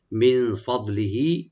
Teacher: মিন এখানে নুন সাকিন আমরা একফা করবো একটু লাইট গুন্না